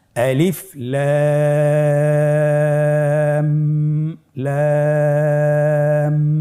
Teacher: মাঝখানে আমাদেরকে একটি গুন্না রয়েছে ওয়াজিব গুন্না সেই গুন্নাটি এক আলিফ টেনে পড়তে হবে